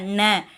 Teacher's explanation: நாக்கோட நுனி பகுதி மேல்வாய் அன்னத்தின் நடுப்பகுதியை, சென்டர் பகுதியை தொடுறதுனால இந்த நகரம் பிறக்குது.